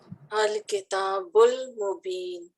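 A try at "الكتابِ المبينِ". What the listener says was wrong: حرکت آخری پڑھیں، ابھی روکے نہیں، الکتاب المبین. تو دیکھیں یہ حمزۃ الوصل لکھنے میں آیا، پڑھنے میں نہیں.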